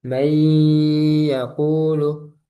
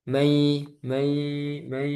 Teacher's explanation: Nah, ini idghamnya naqis. Kenapa? Karena harus masuk hidung.